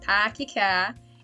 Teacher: I've never been a rhotic speaker. Like, we don't pronounce R's. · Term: non-rhotic